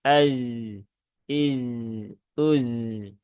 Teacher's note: Zainya itu ada sifat rokhawah, maka tunaikan rokhawahnya